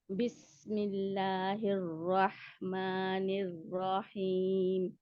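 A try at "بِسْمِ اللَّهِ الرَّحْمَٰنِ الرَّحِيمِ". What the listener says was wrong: निर्राहिम, रा को खींचना नहीं है, निर्राहिम नहीं है।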